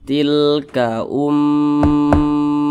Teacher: hamzah berbaris domah Nah maka berarti ini hukumnya gunah musyaddadah jadi dibaca berdengung atau digunahkan suaranya itu kita tahan atau kita panjangkan